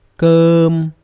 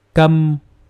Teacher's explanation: the first word is a long uh sound and the second one is short a sound